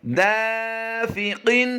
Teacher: دا کو ہم لمبا کر رہے ہیں، فا کو لمبا نہیں کریں گے، اور قاف کی ادائیگی ہم نے پور کرنی ہے